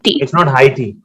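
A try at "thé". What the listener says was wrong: No. It's IT. So we do not pronounce H. When जब वो starting में आता है.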